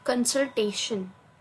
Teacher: the stress is given on TA